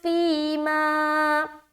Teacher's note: دونوں جگہ مدہ ہو رہا ہے، پہلا جو ہے یا مدہ ہے اور دوسرا الف مدہ ہے، دونوں کو برابر کھینچنا ہے